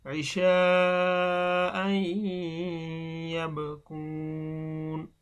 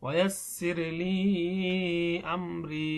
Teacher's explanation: দেখুন মাদের হরফ অর্থাৎ জেরের বাম পাশে যজমালা ইয়া, মাদের হরফের পরে একটি হরকত হামজা আসছে, এজন্য এখানে তিন আলিফ টান দিতে হবে।